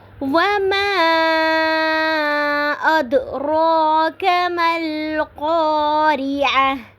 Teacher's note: وَمَا پہ مد منفصل یعنی کہ چھوٹی مد ہو رہی ہے، اد پہ دال پہ قلقلہ ہو رہا ہے